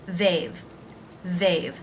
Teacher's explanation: the voiced th sound the a as in say diphthong